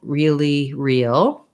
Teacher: It's either curling this way or it's bunching this way. So if I'm saying really real, you can see I don't do any rounding with my lips.